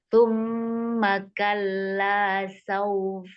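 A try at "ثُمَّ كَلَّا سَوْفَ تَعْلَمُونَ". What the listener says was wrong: masih agak kegedean ya ininya u-nya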